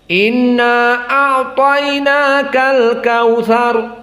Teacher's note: Adapun majaiz munfasil bagi Ibnu Katsir hanya 2 harokat. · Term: mad jaiz munfasil